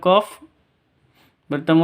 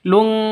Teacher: Tanwinnya ditambah dengan ng, jadi dengung, samar dengung, bacanya lung, seperti itu.